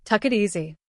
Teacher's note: Even more, the T in it connects to easy. So it often comes out sounding like tuck it easy.